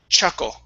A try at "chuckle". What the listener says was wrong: you're saying shuckle. You want ch.